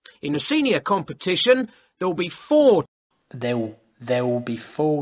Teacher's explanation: the L Sound in Cockney becomes a w sound